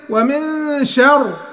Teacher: الراء دي هتفخم وقفا لان هنسكنها قبل منها مفتوح